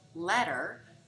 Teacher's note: the end sounds in ladder and letter sound very similar because of Co articulation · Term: flap sound